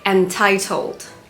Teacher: the British may say entitled emphasizing the T sound a little more